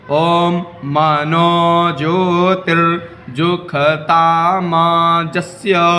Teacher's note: क्योंकि वेद में सा को खा बोलते हैं तो इसलिए मैं यहां पर खा बोल रहा हूं आप लोग